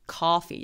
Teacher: 약간 어의 소리에 가까운 더 긴 소리.